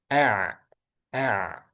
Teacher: Kalau ha hames udaranya ngalir. Ain bainiah ngalirnya ee pertengahan antara syiddah dan rakhawah. Jadi ain ini ngalir tapi tengah-tengah antara syiddah dan rakhawah.